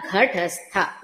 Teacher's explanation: మనకి తెలుగులో అలవాటు ఉన్నది ఏంటంటే ఒత్తు థ అని కూడా ధాలా పలుకుతాం, రాధాము అని.